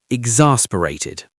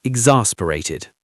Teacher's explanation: Pronunciation exasperated. The stress is on the second syllable.